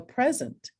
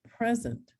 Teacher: Sometimes now a word can be a noun or a verb, such as in, if it's a noun, it's the first syllable that's accented. I'm going to give you a present. If it's a verb, it's the second syllable is accented.